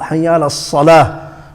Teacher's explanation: There's no full mouth letters in here. So in a sad, there is a full mouth.